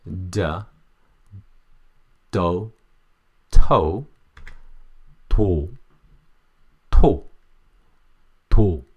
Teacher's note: the tip of tongue is not touching the upper mouth, okay? And then only the tongue blade is working to pronounce